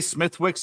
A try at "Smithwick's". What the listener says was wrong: It's Smittix or Smidix. It's either one of the two. You do not pronounce the H.